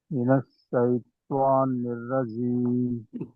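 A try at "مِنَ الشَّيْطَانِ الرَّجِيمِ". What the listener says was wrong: త్వా రాకూడదు, తా నిలుగా రావాలి. తా మినష్ షైతానిర్ రజీం.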